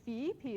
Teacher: that has a rising tone in the first syllable